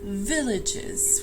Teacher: you pronounce it villages with the stress on the first syllable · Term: stressed syllable